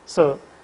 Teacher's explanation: for the first elements the lips are unrounded and for the second element lips are in rounded position